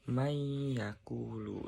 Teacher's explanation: cara bacanya adalah disambung atau seakan-akan bertasydid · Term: idgham